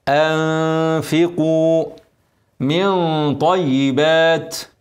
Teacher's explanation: حرف الفاء مرقق انفقوا اكسره كويس وضم القاف مفخمه ومد المد الطبيعي